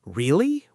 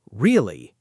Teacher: If someone says, Really? with a rising intonation at the end, it sounds like a genuine question